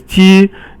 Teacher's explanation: So the next one is 鸡, it's all first tone, and it means chicken.